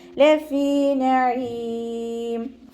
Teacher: ഫഇൻ്റെ കൂടെ മദ്ദ് വന്നു, 2 കൗണ്ട് നീട്ടിക്കൊടുക്കുക